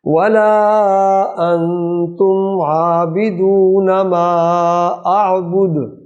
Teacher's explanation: عابدون عین حلق سے آئے گی